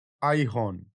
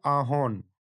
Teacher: আইহন, তা থেকে তৈরি হয়েছে আহন, হস্রই ক্ষীণ হয়ে গেছে। এখানে আকারের পরে হস্রই আছে এবং এটি পূর্ণ হস্রই হিসেবে জোর না পেয়ে অনেকটা আইহন বা সংকুচিতভাবে উচ্চারিত হয়েছে।